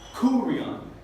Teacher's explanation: Y aquí vamos a poner la énfasis en la primera sílaba, kurion. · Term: acento agudo